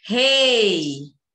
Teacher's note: o E é a vogal, o I só ajuda, ela é semivogal. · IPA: /i/